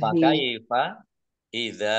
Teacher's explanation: dal fathah alif mat tabi'i panjang 2 harokat